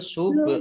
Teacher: Baik, Qaf fathah berdiri, Iqaf fathah alif, mat tabi'i, lam domah, wawu sukun, mat tabi'i, panjang 2 harokat, ba sukun, bacaan qalqalah, ya memantul